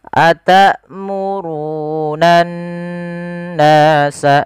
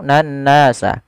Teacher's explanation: Cara membacanya adalah kita menahan suara n-nya sepanjang 2 harakat. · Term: gunnah